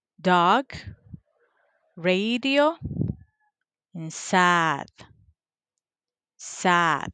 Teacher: That one is voiced. The point of articulation is alveolar. The manner of articulation is a stop or plosive.